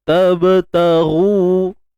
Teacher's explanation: Huruf ba sukun qalqalah sughra. Kita lantunkan dengan keadaan yang tidak terlalu menonjol sangat. Cukup kita lalu je.